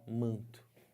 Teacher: Aqui o N não é falado, ele só está nasalizando o A. Ele faz parte, esse N aqui, de um dígrafo. · O N não é falado, como é falado na palavra navio.